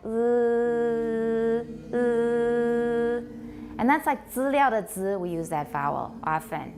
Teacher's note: an unrounded vowel that's the E with the bar through it so between e and U go to the middle